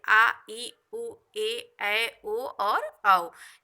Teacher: दीर्घ स्वर आता है, जिसमें 2 मात्रा का समय लगता है